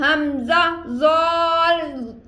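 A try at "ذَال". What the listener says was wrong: زال کو باریک پڑھ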